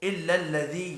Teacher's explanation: یا مدہ ہے، ایک الف کے برابر کھینچ کر پڑھیں گے۔